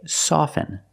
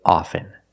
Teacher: with both words I don't pronounce a t